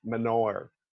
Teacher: pronounced it Menoher, like almost with the H as a W or going right in